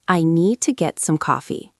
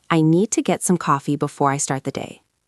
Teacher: The stress is on need and coffee.